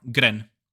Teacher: It's a slightly rolled R, Gren. They have like a weird thing.